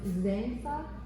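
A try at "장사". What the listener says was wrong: Zhang, say it like a J.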